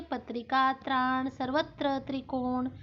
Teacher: त्र में त और र आधा आधी ध्वनि और उसमें पूरे अ की ध्वनि मिलकर त्र शब्द बनता है। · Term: संयुक्त व्यंजन